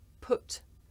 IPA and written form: pʊt (put)